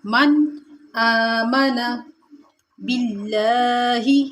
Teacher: لفظ اللہ کی لام کو ہم نے باریک کر کے پڑھنا ہے کیونکہ اس سے پہلے زیر ہے، اور لفظ اللہ کے لام کے اوپر کھڑا زبر کھینچیں گے۔